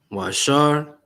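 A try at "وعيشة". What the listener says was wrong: No R, just Wa'aisha.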